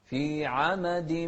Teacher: شوف هني تنوين أتى بعده ميم، والميم من أحرف الإدغام بغنة.